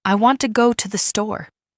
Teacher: For example, I want to go to the store. In this sentence, want and store are stressed, and the other words are said quickly and softly. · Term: Sentence stress and intonation